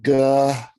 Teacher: It is mandatory to stretch out the SH sound at the end of the word.